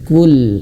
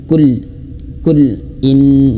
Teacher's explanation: Pelan-pelan di sini ada lam yang bersukun, ya bersukun. Lam yang mati sukun itu jangan sampai terputus suaranya. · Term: tawassut